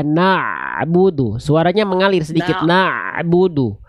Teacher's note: Na'budunya jangan terputus Bunda. Na'budu, ain dilafalkan dari tengah tenggorokan. Na'budu, suaranya mengalir sedikit.